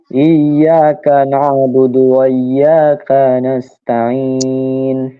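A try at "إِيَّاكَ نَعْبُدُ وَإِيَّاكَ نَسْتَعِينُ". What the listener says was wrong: ইয়াতে এক আলিফ করে টান। ইয়াকা না'বুদু ওয়া ইয়াকা নাস্তাঈন।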